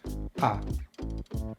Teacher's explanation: To make this diphthong, we first start with the most common sound in English, the schwa sound, which we make by completely relaxing the mouth. The jaw is open midway and the tongue is in the centre of the mouth and the lips are relaxed.